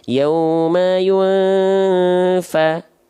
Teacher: Jadi disamarkan dan didengungkan bunyi an pada nun sukun atau tanwin. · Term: samar dengung